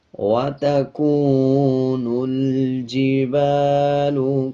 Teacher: کاف کے اوپر پیش ہے اور اس کے بعد واو جزم والا آ رہا ہے، 1 سیکنڈ لمبا کریں گے۔ اسی طرح نون کو لام کے ساتھ ملا کے پڑھا جائے گا۔